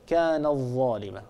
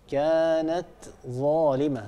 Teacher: وكم قصمنا من قرية كانت ظالمة، كانت ظالمة، عندنا تاء وبعدها ظاء، وهما حرفان متقاربان لأن التاء هي من طرف اللسان مع أصول الثنايا العليا، والظاء هي من طرف اللسان مع أطراف الثنايا العليا، هما حرفان متقاربا، لكن لا ندغم التاء في الظاء هنا، لا نقول كان الظالمة، الصواب كانت ظالمة، نعطي التاء حقها من السكون ومن الصفات، ثم ننتقل إلى ظاء مفتوحة.